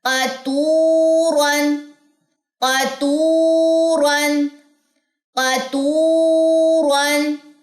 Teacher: قاف موٹا، را موٹا، واو مد یہاں پہ ہو، آپ کے ہونٹ گول ہو